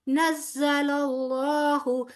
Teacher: نزل اللہ، یہاں اس میں جلالہ کا لام پر پڑا جائے گا، موٹا پڑا جائے گا